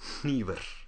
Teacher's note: You'll also notice that the R should be unvoiced.